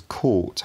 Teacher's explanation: caught has a longer vowel with a higher tongue position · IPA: [kʰoːʔt]